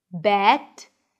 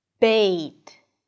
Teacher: make sure you move your tongue to get to the /ɪ/ sound before the last consonant.